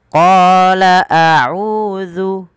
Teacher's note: Qala mad tabi'i 2 harakat, panjangkan qanya. Kemudian bedakan antara hamzah dan ain.